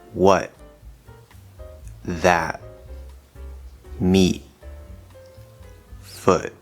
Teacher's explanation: we're going into that t position but we're closing off that air we're not pushing the t out you just kind of hold your breath for half a second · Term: glottal stop t sound, glottal stop T sound